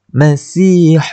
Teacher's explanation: Huruf ada sifat hams kat situ. Macam kita kena bunyi angin dia tu sikit. Hams. Bunyi sin tu.